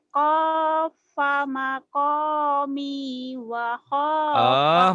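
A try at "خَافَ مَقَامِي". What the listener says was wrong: Mau dianggap orang Jawa ya kopa-kopa wae. Kopa-kopa. Khair. Kho, jangan kopa tuh. Kho.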